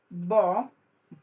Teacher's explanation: আমরা যখন ব উচ্চারণ করি তখন আমাদের কি হয়, অল্প বাতাস বের হয়। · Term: অল্প প্রাণ